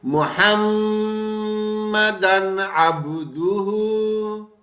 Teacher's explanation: جیسے ہی ہم تنوین پہ آئیں گے، اس کے آگے حروف حلقی ہے تو یہاں غنہ نہیں کریں گے۔